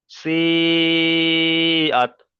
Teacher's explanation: মাদ্দে মুত্তাসিলকে 2 থেকে 3 আলিফ পরিমাণ টান দিয়ে পড়তে হবে